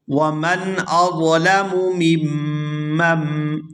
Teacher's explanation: یہاں میم کو میم مشدد کے ساتھ ملائیں گے اور پھر دوسری میم مشدد کو اس سے آگے والی میم مشدد کے ساتھ ملائیں گے. درمیان میں جو نون ہے یہ سائلنٹ ہو جائے گا